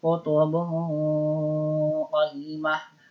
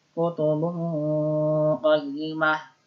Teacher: ketika mendengung, posisi lidah kita, lisan kita sudah berada pada makhraj huruf qaf. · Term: ikhfa